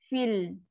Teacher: Lam ada sifat tawasud. Tak nak kata keras sangat pun tak, nak kata melirik-lirik sangat pun tak. Tengah-tengah aja.